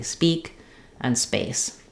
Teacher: I don't want like a lot of voicing early. So it's kind of in between a P and a B, basically. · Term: unaspirated p, unaspirated P